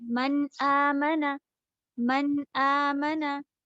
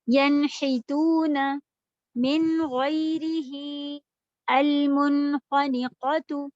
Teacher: आपने जैसे सभी लेटर के साथ जो आप करती हैं वही किया, यानी कि आपने ना कोई गुन्ना किया, ना कोई इदगाम किया, ना किसी में मिलाया